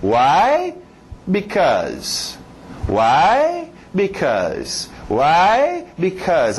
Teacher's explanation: Why sempre vai subir. É sempre usado para fazer pergunta. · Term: entonação